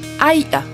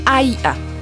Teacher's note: Une voyelle longue, deux glottales. Aïa. Accentué, aïa.